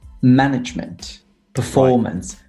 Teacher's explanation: Management on the first syllable performance on the second syllable